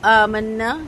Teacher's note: آمنا میں نون کے اوپر تشدید ہے، 2 حرکت تک غنہ کریں گے اور نون الف نا کو 2 کاؤنٹس لمبا کریں گے۔